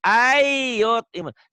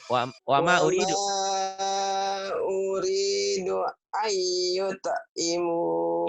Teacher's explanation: Idgham bi gunnah. An nun mati ketemu ya jadi idgham.